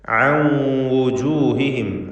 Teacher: അൻ എന്നതിലെ സാക്കിനത്ത് അനൂനിനെ ഇദ്ഗാം ബിഗുന്ന ചെയ്ത് വാവിലേക്ക് ഭാഗികമായി ലയിപ്പിച്ച് മണിക്കണം.